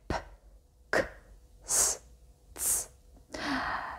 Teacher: A voiceless consonant like P [sighs] is voiceless. So we don't have any vibration in the throat while producing this sounds.